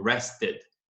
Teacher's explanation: você tem o som do D. Mas antes do som do D, você tem um I bem pequenininho. Rested. Então, repare que o E mesmo, nunca é pronunciado.